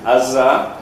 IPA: ɑzɑ